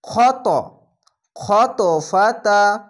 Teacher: ত এর উপরে সাকিন তার জন্য এখানে কলকলা হবে